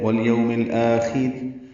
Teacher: الاخر کے، ان میں اظہار ہو رہا ہے، یو وولین ہے، آخر میں آ مد بدل ہے، خو پر پڑھیں گے، وقفاً را باریک ہے ، والیوم الآخر، اور ملانے کی صورت میں بھی را باریک